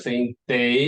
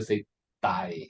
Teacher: Instead of saying day in British English, they will say die.